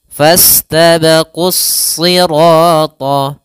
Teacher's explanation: alif lam yang dia ditulis tapi tidak dibaca sehingga langsung ke huruf Shad kemudian di sini huruf shadnya dibaca dengan tebal karena SH salah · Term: alif lam syamsiyah